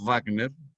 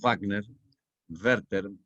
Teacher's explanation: la V se pronuncia en alemán labio dental, no como ustedes están acostumbrados a pronunciar en inglés la W que es gutural.